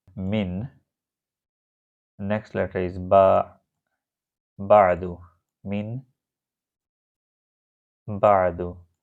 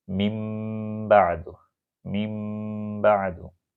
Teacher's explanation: It is min ba'du, but you should apply the rule iqlab. Ba is coming after noon sakin. Usually we see small meme between these 2 letters. So it will be read mim ba'du, changing sound. Mim ba'du, mim ba'du.